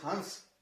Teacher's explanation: नाक से जो आवाज आएगी वो अनुनासिका होगी